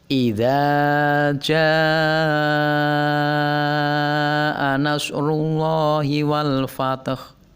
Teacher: Jaa adalah ada hamzah tapi didahului oleh alif, dan jaa adalah satu kata, maka ja-nya dibaca panjang 5 harokat. Ini disebut dengan mad wajib muttasil.